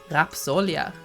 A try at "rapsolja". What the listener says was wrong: It's here, back in the throat. Rapsolja. Rapsolja. Yeah, but you're like rapsolja right here at the tip of your tongue, right? But in our thing, we're like rulleball.